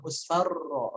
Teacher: Takrir. Takrir itu adalah getaran. Jadi R-nya jangan sampai hilang getarannya. Musfarra, ro jelas.